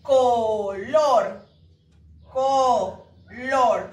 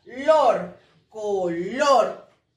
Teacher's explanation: Color, color, tiene dos sílabas. Y sí, la última sílaba es la que tiene más fuerza, lor, color. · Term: palabra aguda